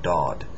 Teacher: It's a D sound, but it has the vowel after it is going to be more aw sounding, dod. Not dad, but dod.